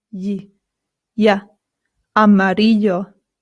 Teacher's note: the double L in Spanish makes a Y sound